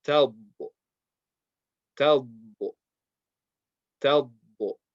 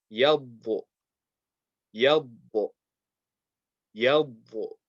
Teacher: There's barely any sound when you make the dad with the sakin. Talbo, because your tongue is basically touching just one spot on the teeth.